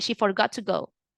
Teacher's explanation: the T of the forgot word it goes silent